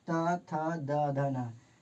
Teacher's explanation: जब भी इसको हम पढ़ते हैं तो जीभ है जो दांत में सटता है, इसलिए इसका उच्चारण दंत से होता है।